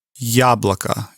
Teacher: you elongated a little bit the yah because it's at the beginning of the word and the stress falls on it